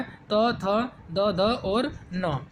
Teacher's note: जिह्वा आपकी दंत से स्पर्श करती है, आपका त वर्ग आपका पूरा होता है